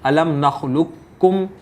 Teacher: ہم قاف کو کاف میں بدل دیں گے اور کاف کو کاف میں مدغم کریں گے اور اس کو پڑھیں گے الم نخلقکم۔ اور دوسری مثال جو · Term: ادغام تام